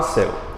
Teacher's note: duas vogais em que o acento recaiu sobre a primeira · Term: ditongo decrescente